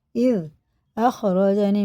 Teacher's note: زال باریک ہوتا ہے، زبان کی نوک آگے کے اوپر والے دانتوں کے کنارے چلا. اذ اخرجنی من السجن وجاء بکم من البدو، میم ساکن بعد میم آ رہا تو غنہ کر کے پڑھیں گے.